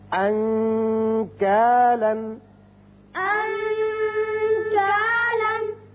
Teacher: نون کا جو آپ اخفاء کریں گے تو تھوڑا سا غننے کی طرف زیادہ مائل ہوگی آواز